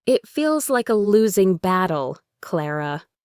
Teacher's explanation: The falling tone suggests he's stating a fact that he really believes it's a hopeless situation.